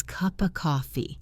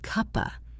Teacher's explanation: the p in cup connects to the o in of. And the F sound in of often becomes very soft or disappears entirely or connects to the next word. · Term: connected speech